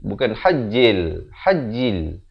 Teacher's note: Ada bunyi hamasnya, itu bunyi angin.